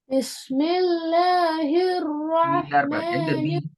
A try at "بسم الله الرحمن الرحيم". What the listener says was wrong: எங்க பி பிஸ்மில்லால பிஸ்மில்ல பி இல்ல இப்ப பிஸ்மில்லான்னு தான் போகுது. போது அல்ல சவுண்ட் வரணும்.